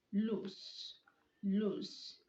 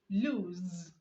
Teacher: Loose is LOOSE and it ends with the S sound, while lose, which is LOSE, ends with the Z sound.